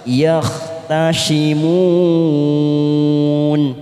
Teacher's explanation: huruf kha jangan samakan dengan ha lebih kasar